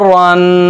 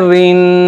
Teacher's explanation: रा ऊपर वाली हरकत के साथ मोटा पढ़ा जाता है और नीचे वाली हरकत के साथ बारीक पढ़ा जाता है। यानी रा के ऊपर जब भी दो ज़बर आए, दो पेश आए, ज़बर आए, पेश आए, खड़ी ज़बर आए, उल्टा पेश आए, तो ये मोटा पढ़ा जाएगा।